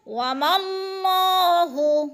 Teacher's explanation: मीम को अल्लाह के साथ मिला के अल्लाह को पुर पढ़ेंगे